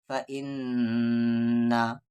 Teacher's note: فا پہ زبر فا، ای کو نام ان، نون پہ زبر نا، فا اننا، نون مشدد ہے یعنی یہاں پر غنہ ہوگا، غنہ یعنی آواز کو ناک میں رکھنا